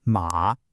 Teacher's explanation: This is the third tone. Your voice literally takes a little dip down and then comes right back up. Ma. It's a little scoop.